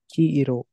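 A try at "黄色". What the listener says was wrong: Yep, long E. Perfect.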